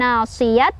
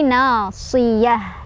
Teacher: Tak marbutoh berhenti jadi hak gede ya, bukan nasiyat tapi nasiyah ya. Dan lepasin ya, nggak panjang, bukan nasiyah tapi nasiyah.